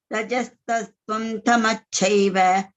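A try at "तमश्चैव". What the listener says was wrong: Tamaschaiva. Sha is there.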